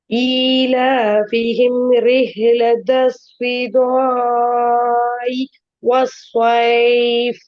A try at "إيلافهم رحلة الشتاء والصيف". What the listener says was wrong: நீட்டுறது போதாது. இப்ப சரி 4 கவுண்ட் இல்ல அது.